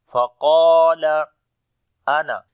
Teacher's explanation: Qaf and alif we read in heavy sound. Qaf we are reading in heavy sound due to isti'la letter, and alif we are reading in heavy sound because before the alif there is heavy letter.